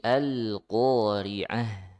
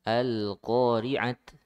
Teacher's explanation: Nah, di sini ada ta marbutah ya. Jadi kalau ta marbutah ketika waqaf dibaca seperti huruf ha ya. Dibaca huruf ha.